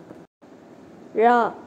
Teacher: இது நா போல இருப்பதால் நகர லகரம் என்று கூறுவர். ழ, நாவின் நுனி மேல் நோக்கி வளைந்து வருடுவதால் ழகரம் தோன்றும். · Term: சிறப்பு ழகரம்